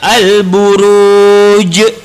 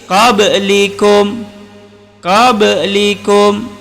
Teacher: ba itu adalah qalqalah kecil, maksudnya lantunnya kecil ataupun namanya qalqalah kecil. Jadi qablikum, tapi kalau besar jadi ni al-buruj.